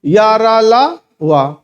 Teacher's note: कोई हवा नहीं निकली क्या है अल्पप्राण है